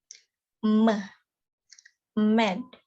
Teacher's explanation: There are 3 nasal consonants in English: m, med. Oral passage is blocked by closing the lips. It is bilabial.